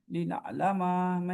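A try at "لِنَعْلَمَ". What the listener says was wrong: नहीं, झटका नहीं, वो हमजा बन जाएगा ना। ना। नहीं, ये झटका लग गया, हमजा बन गया। ना। इधर देखिए। ना। आइन आइन आएगा ना। इधर ना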